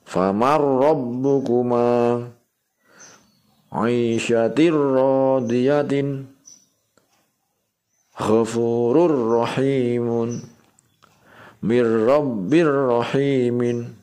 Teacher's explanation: Nah, ditekan ya membacanya, tidak boleh dengung kalau idgham bila hunnah.